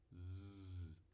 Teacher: Fricativa, fluxo constante do ar, só que com uma restrição. Alveolar, ou seja, língua se aproximando dos alvéolos, ali atrás dos dentes. Sonora, com vozeamento.